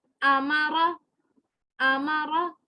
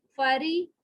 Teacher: را کے اوپر زبر ہے اس کو موٹا پڑا جائے گا